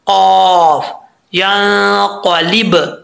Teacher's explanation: زبان کی جڑ اوپر والے دانتوں کی جڑوں سے لگے، سوری، زبان کی جڑ اوپر والے تالو کے نرم حصے سے لگے تو قاف پڑھا جاتا ہے